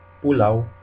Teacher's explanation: P is also like in English, and just like K, it's not aspirated.